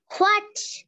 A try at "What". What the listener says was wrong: এ হোয়ার কেন উচ্চারণ হয়েছে?